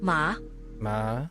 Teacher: Third tone is the lowest tone in Chinese. Before another syllable, it stays low. If it's by itself or at the end of a sentence, it rises back up in pitch.